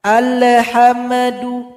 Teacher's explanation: Ketika baca al juga tidak boleh tawallud. Tidak boleh juga dipantulkan.